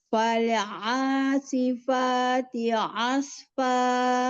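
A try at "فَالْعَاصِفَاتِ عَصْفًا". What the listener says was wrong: Sekarang lamnya biar nggak fale, ditahan lam sukunnya di makhrajnya. Fal asifati asfa. Iya, asfa.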